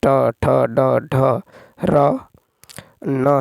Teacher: ठीक, नेक्स्ट देखिए 15 है कि मूर्धन्य अल्पप्राण अघोष वर्ण का उदाहरण कौन सा है, तो 15 का होगा मूर्धन्य अल्पप्राण अघोष वर्ण। मूर्धन्य व्यंजन वे होते हैं जो मुख के भीतर तालु और ओठ के बीच कठोर भाग मूर्धा से उच्चारण किए जाते हैं। इसमें ट, ठ, ड, ढ, र, न है।